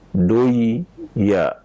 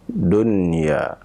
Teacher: Kalau melihat daripada hukumnya, maka di sana ada nun yang sukun bertemu dengan huruf ya. Akan tapi cara membacanya ya adalah tetap dibaca dengan jelas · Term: izhar